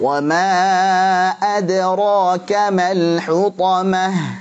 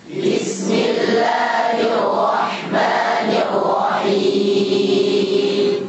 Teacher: Di wa ma 4 harakat, mad jaiz munfasil.